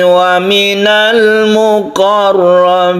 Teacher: Muqarrabin kita baca panjang sekali, itu tidak masalah, panjang sampai 3 alif itu tidak mengapa karena disebut dengan mad adid lisukun